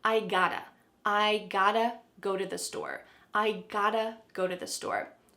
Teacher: Now, just to let you know, sometimes in American English, when there is a present perfect verb tense, like I have got to do something with the word have, sometimes we drop have completely, especially with got to